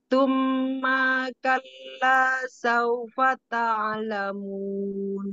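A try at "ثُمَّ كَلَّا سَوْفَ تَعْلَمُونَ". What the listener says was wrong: Ulangi, thumma ma-nya pendek. Thumma kalla.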